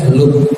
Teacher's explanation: hamzah sukun baru diputus suaranya. Hentakkan saja